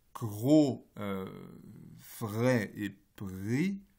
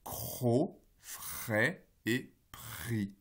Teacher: Mais c'est le même principe lorsqu'on a une assimilation partielle, comme en français, par exemple avec gros, vrai et pris. J'essaye de faire un re sonore pour la version phonémique dans la première colonne, et qui se réalise cro, frais et pris, avec un re sourd